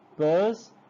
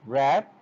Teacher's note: upper lip comes and joins the lower lip while the production of this p sound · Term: bilabial sound